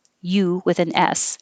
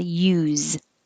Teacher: So if it means the purpose of something, like what's the use of trying, it will sound like use, you with an S, and the stressed sound is oo. If it's the action, how do you use this? It will sound like a Z at the end